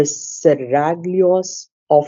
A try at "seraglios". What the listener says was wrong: No, Seraglio, no G sound. G is silent.